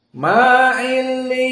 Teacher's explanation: Dan adapun ma'illiyun, maka di sini sama seperti jumhur kecuali Ya'qub al-Hadrami. Karena illiyun dari jam'i mudzakkar as-salim ditambahi waw nun, maka di sini dibaca dengan ha as-saktah.